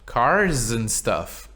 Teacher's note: Like, the plural of car is cars, right? But when you say cars and something else, that S becomes a Z.